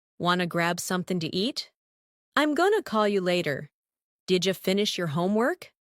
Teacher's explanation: In real English, people often drop sounds when speaking fast. For example, want to becomes wanna.